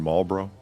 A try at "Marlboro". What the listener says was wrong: Yeah, you don't pronounce the L. Marlboro. Marlboro. No, just Marlboro.